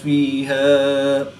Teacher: الف مدہ کو وقف کی حالت میں تبدیل نہیں کریں گے، بلکہ ایک الف یعنی 2 حرکات کے برابر ہی کھینچ کر پڑھیں گے